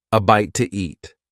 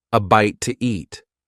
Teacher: In fast speech, when one word ends in a vowel sound and the next one starts with a vowel sound, we often add an extra sound to make it easier to say. In this case, the extra sound is W, a bite to eat.